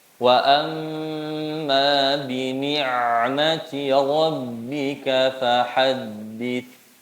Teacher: Sebelum menyempurnakan sifat bainiyah huruf ain sukunnya, sempurnakan dulu kasroh huruf nunnya sehingga jelas vokal i. Jangan sampai baca bini' ya, seperti harusnya i.